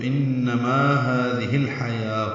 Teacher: ہادی میں ہا کھڑی زبر قائم مقام مد اصلی، دال باریک نرمی سے پڑھیں گے، ہی مد صلہ ہے، لیکن الحیا کا حمزہ عارضی ہونے کی وجہ سے ہا کے نیچے زیر لگا کے لام سے ملا دیا گیا، اظہار قمری ہوگا، ہا وسط حلق سے ادا کریں گے